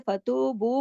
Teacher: अगर हम रुके हैं तो ज्यादा नहीं खींचेंगे, फतूबू करके रुक जाएंगे, लेकिन जब दोबारा शुरू करेंगे बू का ऊपर जो मद है उसका भी पूरा हक अदा होगा।